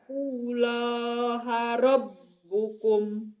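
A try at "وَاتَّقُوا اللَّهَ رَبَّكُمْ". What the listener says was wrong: Wattaqullaha rabbakum bukan rabbukum ya teh. Ayo.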